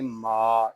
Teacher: میم الف زبر ما، میم کو ایک الف تک کھینچ کر پڑھیں گے کیونکہ یہاں پہ الف مدہ ہو رہا ہے، اس کو پڑھیں گے ما، اس کو ماں نہیں پڑھیں گے، ناک میں آواز نہیں جانی چاہیے۔ اس طرح کلمہ ہے نا مال، مال کے میم کو جس طرح ہم ادا کرتے ہیں اسی طرح اس میم کو ادا کریں گے ما۔